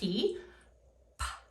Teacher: lips come together and a puff of air is released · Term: bilabial sounds